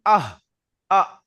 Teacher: হামজাহার মাখরাজ হলো গলার শুরু থেকে উচ্চারণ হয়, যেমন আহ আ।